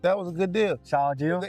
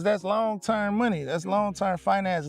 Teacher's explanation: pretty common amongst Black American English speakers, is replacing the TH for a D